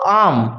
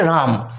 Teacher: শব্দের শুরুতে যখন স্বরধ্বনি থাকে সেই স্বরধ্বনি যুক্ত শব্দের শব্দগুলোতে যখন একটা অতিরিক্ত র চলে আসে এই প্রথমেতে র আসাটাকেই বলা হচ্ছে আদি ব্যঞ্জনাগম। অন্য কোন ব্যঞ্জন ধ্বনি শব্দের প্রথমেতে আসতে পারে না।